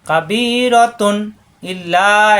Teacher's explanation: রতুন তানবিনের পরে হামজা ইজহার স্পষ্ট হবে, গুণ হবে না